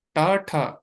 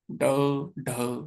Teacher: ट ठ वाइब्रेशन नहीं है। ड ढ वाइब्रेशन हो रही है गले में।